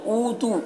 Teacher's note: नल्लज़ीना दाल को बारीक पढ़ेंगे, या मद्दा है, एक अलिफ के बराबर खींचेंगे। ऊतू ऊ में वाव मद्दा है, इसे एक अलिफ के बराबर खींचेंगे।